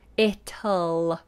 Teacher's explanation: the other way you can do is to release the T it'll and go back for the L